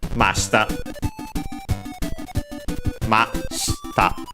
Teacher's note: Accented on the ma.